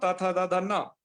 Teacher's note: इनका उच्चारण स्थान क्या है, दंत, इनको आप दंत से बोलेंगे